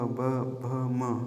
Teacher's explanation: म्हणजे आपली ओठ ना एकमेकांना स्पर्श होते त्यांना आपण होष्ट वर्ण म्हणणार आता कंठ प्लस तालूचा उपयोग करून